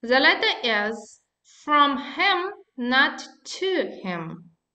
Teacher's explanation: Okay, stress on the opposite prepositions.